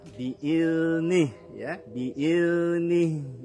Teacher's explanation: Zal mengalir bunyinya tetapi tidak mengalir napas ketika mengucapkan huruf zal.